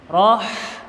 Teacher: Ada ha kecil mati, suara seperti kecekik, roh. Nah, suara pedas, roh.